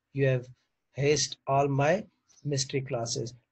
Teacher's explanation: involved The Interchange of two initial sounds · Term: spoonerism